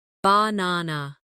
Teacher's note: in the word banana, the stress is on the second syllable